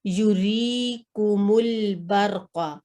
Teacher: یہ یا مدیہ ہے، جی یا ساکن سے پہلے کسرہ آئی ہے را پہ. تو یہ بھی 2 سیکنڈ لمبا کریں گے ہم اس کو